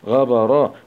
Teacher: راء فتحة مع التفخيم